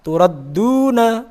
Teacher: Turadduna, ra tura, nah itu tafkhim, ra fathah. Turadduna, duna ada dhammah diikuti wawu sukun, mat tabi'i lagi panjangnya 2 harokat